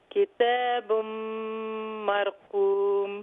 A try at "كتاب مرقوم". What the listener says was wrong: مرقوم. I want that ra to be more full mouth.